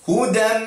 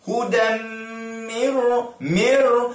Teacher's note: Idgham ma'al gunnah. Okey, jadi masukkan dan dengung.